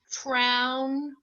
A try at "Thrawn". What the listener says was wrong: You said trown. What are you thinking for AU? Thrawn?